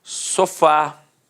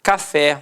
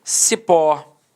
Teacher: repare que a sílaba tônica é a última e é terminada de fato em ar café e repare que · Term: oxítona